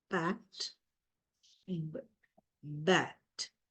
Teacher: These are two sounds which we produce by bringing the lips together. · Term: bilabial sounds